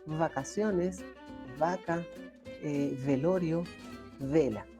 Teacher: la B labidental se pronuncia con el labio de abajo y el filo de los dientes, pero no los pego completamente, porque si los pego no sale el aire.